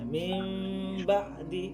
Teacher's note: দেখেন এখানে এই কায়দাটার ক্ষেত্রে পড়ার সময় একটু ভিন্নতা আছে, যেমন আমরা মিম মিমজের মিম গুণনা করতে পারি, কিন্তু এই বা ইকলাবের কায়দার ক্ষেত্রে আমরা কি করব, এই মিমটা উচ্চারণের সময় কিছুটা মুখটা হালকা করে ঠোঁট লাগাবো, তো উপরের ঠোঁট নিচের ঠোঁটটা হালকা করে মেশাবো, শক্ত করে মেশাবো না।